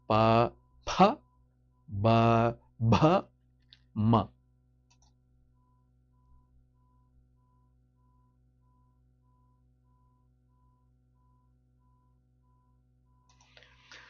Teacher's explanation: letters produced when the lip is either partially closed or complete completely closed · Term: labials